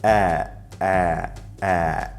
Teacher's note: All the different ways of writing Hamze indicate the exact same consonant sound, a glottal stop, which is the sudden interruption of the airflow in the throat